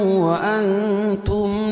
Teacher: یعلم وانتم اخفا حقیقی کیونکہ نون ساکن کے بعد حروف اخفا کے 15 حرفوں میں سے تا ہے تو یہاں ناک میں آواز کو چھپا کر پڑھیں گے